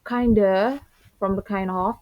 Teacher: The fricative v in of is dropped, and the remaining vowel assimilates with the preceding sound in connected speech.